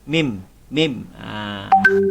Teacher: syafawi itu adalah maksudnya huruf yang keluar daripada bibir, yakni mim. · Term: izhar syafawi